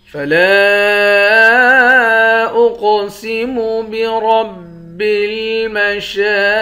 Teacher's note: حمزے کو قاف کے ساتھ ملا کر قاف کو موٹا بھی پڑھیں گے اور قاف پر قلقلہ بھی کریں گے۔ را کو موٹا پڑھیں گے، شین کے اوپر کھڑا زبر ہے، اس کو 1 الف کی مقدار کھینچ کر پڑھیں گے، قاف کو موٹا پڑھیں گے۔ · لام کے بعد الف ہے، اس الف پر مد ہے، اس مد کو 3 الف کی مقدار کھینچ کر پڑھتے ہیں۔ حمزے کو قاف کے ساتھ ملا کر قاف کو موٹا بھی پڑھیں گے اور قاف پر قلقلہ بھی کریں گے۔